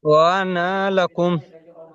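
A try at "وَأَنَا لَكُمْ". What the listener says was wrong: না টান হবে না জি, ওয়া আনা লাকুম, ওয়া আনা লাকুম। জি, এটা হলো আনা শব্দের কায়দা, তাই না?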